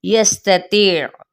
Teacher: سین پہ سیٹی کو واضح کرنا ہے